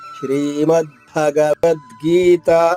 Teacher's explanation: ఇక్కడ భ అనేది మహాప్రాణము ఒత్తుంది